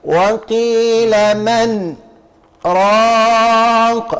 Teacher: قاللك ساكته لطيفه على النون · النون هنا عليها سين، اهي مرسومة السين اهي، ومعاها في الهامش كده قال لك سكتة لطيفة على النون